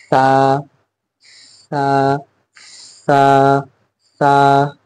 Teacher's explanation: हमने जबानों को, दांतों को खोलना है, यानी मुंह खुला हुआ हो हमारा, और इसके बीच से हमारी जबान आ गई, ये ऊपर के दांत, ये नीचे के दांत, ठीक है।